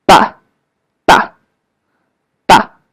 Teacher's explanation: The neutral tone is somewhere in the middle and very short.